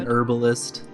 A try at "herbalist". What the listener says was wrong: Yeah, but it's herbalist. The H is there. Pronounce it.